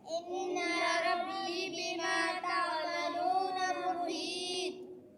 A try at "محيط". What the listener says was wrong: محيط कलकला है कि नहीं करो ना कलकला ويا قوم اعملوا على مكانتكم إني عامل سوف تعلمون